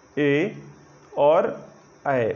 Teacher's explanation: मैंने आपको बताया था, जब मैं स्वर आपको बता रहा था तो मैंने बताया था कि यह आ और ई के संयोग से बनता है और ऐ जो है ए और आ के संयोग से बनता है। तो कंठ और तालु के दोनों वर्ण आपस में मिलते हैं तो ए और ऐ बनता है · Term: कंठ तालु